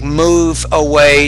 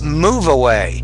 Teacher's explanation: there's not really a pause between move and away